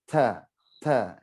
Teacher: Ada nafasnya. Terlepasnya nafas, terlepasnya udara. Suara udaranya terdengar. · Ta memiliki sifat hamas, makanya bunyinya ta, ta ya, ada udaranya. Ada nafasnya. Terlepasnya nafas, terlepasnya udara.